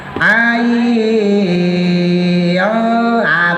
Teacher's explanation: jadi tetap dipanjangin dulu ya karena 5 sampai 6 harakat namanya mad lazim Harfi musba